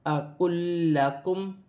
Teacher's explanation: लाम साकिन भी है और लाम मुशद्दद भी है, दोनों लाम को मिलाकर पढ़ा जाएगा